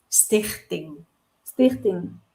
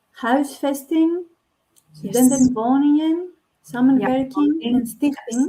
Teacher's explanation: when we have the N and the G together, we don't really pronounce the G